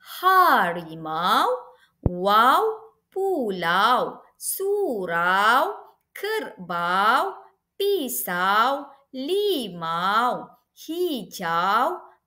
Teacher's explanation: Diftong diejaca dengan gabungan dua huruf vokal yang dilafazkan sebagai bunyi luncuran iaitu bunyi vokal yang pertama menggeluncur ke bunyi vokal yang kedua. Sebutan bunyi vokal yang pertama adalah lebih lantang berbanding bunyi yang kedua. Baiklah, dalam bahasa Melayu terdapat tiga jenis huruf huruf diftong yang dieja dengan gabungan dua huruf vokal iaitu I, au dan juga oi.